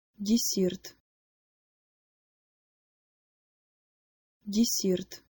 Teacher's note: the d and the s in this word are softer than what you would expect them to be if they were just in English. The middle part of your tongue should be towards the roof of your mouth, and the tip of your tongue should be going towards your bottom teeth.